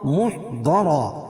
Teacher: اور را کے نیچے 2 زیر کی تنوین ہے، اور تنوین کے بعد ادغام مع غنہ کے 4 حرفوں میں سے میم ہے تو یہاں غنہ کریں گے۔ خیر محضرا، محضرا ضاد کو پر پڑھیں گے اور را کو پر پڑھیں گے